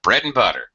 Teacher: you might actually see and in this reduced form with an n and an apostrophe bread and butter because that's how we usually say it actually